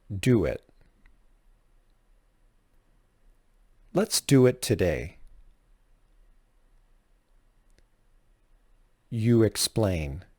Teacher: when a word ends with the tense vowels U or o and the next word begins with a vowel sound the two words are connected with a W sound